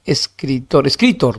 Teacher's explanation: escritor en tor también es aguda